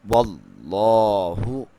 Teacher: اللہ کے لام کو موٹا پڑھیں گے کیونکہ اس سے پہلے لفظ پہ، حرف پہ زبر ہے